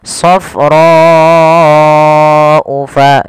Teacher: Panjangkan huruf ro sepanjang 4 harokat karena di sini ada bacaan yang kita namakan dengan mad wajib muttasil. Mad wajib muttasil yaitu mad yang terjadi akibat adanya huruf hamzah yang datang setelah huruf mad.